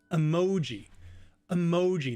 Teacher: the mo is louder and longer